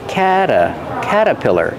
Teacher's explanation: usually we don't pronounce that R we say cata caterpillar and the T changes to a fast D